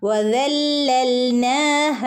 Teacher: ലാമിനെ ഒന്ന് കനപ്പിച്ചു കൊടുക്കുക ട്ടോ വദല്ലൽഹ ഇവിടെയൊക്കെ മദ് മദ് ത്വബി എന്നറിയപ്പെടുന്ന രണ്ടനക്കം മാത്രം നീട്ടാനുള്ള സാധാരണ മദ്ദാണ്